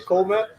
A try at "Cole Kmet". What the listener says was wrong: K's aren't silent unless in front of an N.